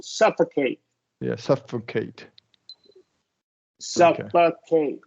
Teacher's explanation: So remember, when you get these 3-syllable words with 8, you can you can do a schwa for that middle syllable